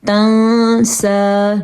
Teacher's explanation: نون کو تھوڑا چھپا کے پڑھیں گے کیونکہ نون کے بعد سین آیا ہے اور سین جو ہے وہ حروف ہلکی میں سے بھی نہیں ہے.